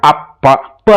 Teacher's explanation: ಈ ತುಟಿಗಳ ಒಂದಕ್ಕೊಂದು ಅಂಟಿಕೊಳ್ಳುತ್ತೆ ಅಲ್ವಾ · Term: ಓಷ್ಟಾಕ್ಷರ